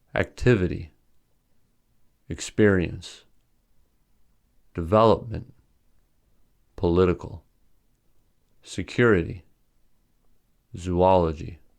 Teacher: The following words have stress on the second syllable.